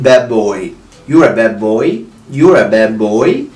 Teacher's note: وكمان الدي لما بتيجي في اخر الكلمة وبعديها بيجي consonant دي ممكن تكون silent